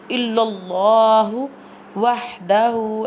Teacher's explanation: ha pronounced from the middle part of throat